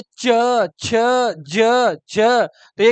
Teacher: च वर्ग को अगर देखें स्पर्श संघर्षी बोलते हैं क्या बोलते हैं हां देखो कैसे स्पर्श संघर्षी का मतलब रगड़